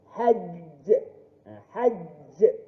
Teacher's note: Qalqalah akbar dia mesti ada macam kata orang tu stop sikit.